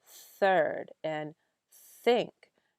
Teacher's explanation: throat your your fingers on your throat when you say third you're not voicing the word until you get to the vowel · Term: unvoiced th